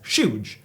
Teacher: some Scottish dialects will pronounce words like huge as shuge and Shetland as in the islands was originally spelled like this